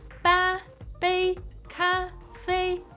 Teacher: This is the first tone, high and flat, which you can keep pronouncing until you are short of breath.